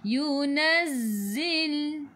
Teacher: Sifat huruf zai. Sofir kena bunyikan z. Macam bunyi lebah. · Matikan dengan lam. Hujung lidah menyentuh langit keras di bahagian depan.